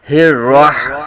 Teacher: پہلے ہا کی آواز حلق کے نیچے سے اور پھر آگے راہ میں ہا کی آواز حلق کے درمیان سے. ان دونوں ہا میں ہا اور ہا میں واضح فرق کرنا ہے.